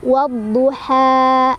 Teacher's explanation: Cara bacanya alif lamnya tidak dibaca, jadi kita langsung masukkan ke huruf yang bertasydidnya, ke huruf syamsiyahnya ya. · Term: alif lam syamsiyah